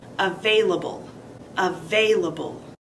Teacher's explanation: Available has four syllables. Emphasis is on the second syllable.